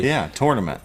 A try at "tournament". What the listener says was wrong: Tournament. There's no toy to it. It's tournament. Tournament. Tournament.